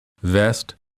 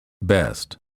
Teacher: for the V sound the upper teeth touch the lower lip for the B both lips touch and fully close so that no air escapes